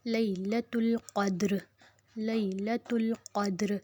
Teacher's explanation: अब देखें यहाँ पे या लीन आ गई है, या पे जज़्म पीछे ज़बर तो नहीं खींचेंगे